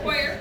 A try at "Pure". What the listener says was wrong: Hoyer is the German pronunciation. Pure is mine.